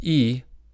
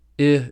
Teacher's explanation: Vowels that are high and front are E and I. Compared with E, I is lower and less frontal.